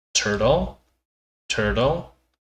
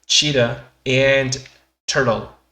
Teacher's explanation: Y aquí pueden notar que las R's que he marcado en rojo, estas son originalmente sonidos de T. Es decir, cheetah en turtle. Pero normalmente se suelen suavizar a una R. Entonces, cheetah and turtle.